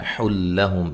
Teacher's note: یہاں نون تنوین کا ادغام ہے لیکن بلا غنہ ہے، غنہ نہیں کریں گے